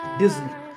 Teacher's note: the s in the middle is actually a z sound